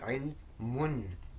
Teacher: almost as if there's a noon at the end here with a sukoon. And that's it's never written. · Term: dhamma tanween